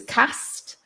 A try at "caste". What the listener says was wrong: Interesting you pronounce it like that, because in the south of England we say caste. Caste. Same as car.